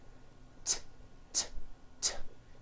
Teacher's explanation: it's unvoiced your vocal cords are not vibrating